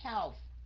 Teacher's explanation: răng trên cắn môi dưới have